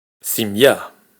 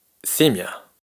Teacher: Aparte de que en simya el acento cae en la última sílaba, mientras que en semia el acento cae en la primera sílaba, para el tema que estamos viendo hoy, la diferencia es que en simya pronunciamos miya, mientras que en simia pronunciamos mia.